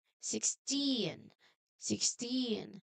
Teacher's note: It should be strong on the last part